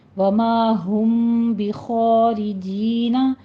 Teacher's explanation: میں آپ نے وما ہم بخارجین، جینا جینا نہیں کہنا ہے، سانس کی آواز نہیں آئے بیچ میں، ہمس نہیں لانا ہے، جینا قوی آواز کے ساتھ پڑھیے